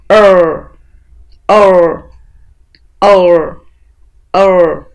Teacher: chúng ta đọc nhẹ hơn một chút chúng ta sẽ đọc thiên về phía dấu huyền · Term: nguyên âm ngắn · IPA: ə